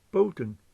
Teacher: since it's open, the O is pronounced as a long vowel